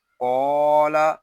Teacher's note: یہاں قاف کو ہم ایک الف تک کھینچ کر پڑھیں گے کیونکہ یہاں الف مدہ ہو رہا ہے